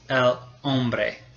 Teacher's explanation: In Spanish, la H is completely silent. It never says anything.